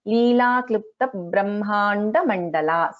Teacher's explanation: So in this you have to notice this klipta, ta is not a mahaprana, it is an alpa prana